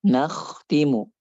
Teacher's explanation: Kita menjelaskan sifat kha, yaitu tebal, kemudian juga rokhawahnya. Nakhtimu, jangan nakh tipis, ataupun jangan tadi rokhawahnya enggak mengalir.